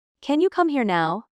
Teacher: Notice the stress on come and now.